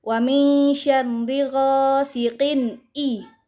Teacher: apabila ada kasrotain bertemu dengan salah satu huruf izhar yaitu a, maka dibaca jelas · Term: izhar halki